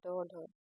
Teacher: जिनके उच्चारण में जीभ ऊपर उठकर तुरंत नीचे गिरती है, उन्हें उच्छित व्यंजन कहते हैं